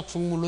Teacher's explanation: 국물 같은 경우도 기역과 미음이 만나 기역과 미음이 만나면서 이것이 이응과 미음으로 됐죠